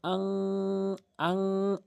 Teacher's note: নাকের ভিতরে লুকিয়ে গুনগুন আওয়াজ করে উচ্চারণ করতে হবে। যেমন হামজা নুন জবর আন না বলে হামজা নুন জবর আং, আং এরকম বলতে হবে, আং এরকম বলতে হবে। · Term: ইকফায়ে হাকিকির গুন্না